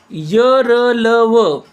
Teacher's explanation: र ल व उच्चार इ र ल उ या स्वरांसारखा होतो हवा सहज बाहेर पडते म्हणून यांना अर्धस्वर असणारे व्यंजन म्हणतात